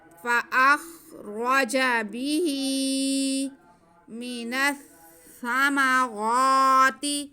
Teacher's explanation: سا کو سیٹی کی آواز کے بغیر پڑھیں گے، بالکل بھی سیٹی کی آواز نہیں آئے گی، نرمی سے پڑھیں گے